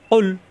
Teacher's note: অফেস কৌ জিব্বার গোড়া থেকে, জিব্বার গোড়া উপরে তালুতে চাপ দিয়া কৌ মিলবে লামের সাথে